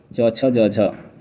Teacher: यह स्पर्श संघर्षी व्यंजन कहलाते हैं।